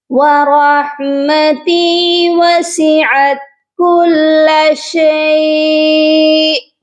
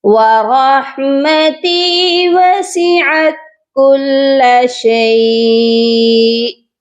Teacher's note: شیء کی مقدار کو پورا کیجئے اور پھر حمزہ پر جھٹکا دیجئے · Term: حمزہ ساکن